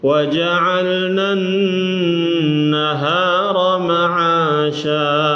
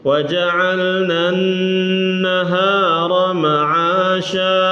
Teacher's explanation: Nun tasdid ditahan gunnah ya.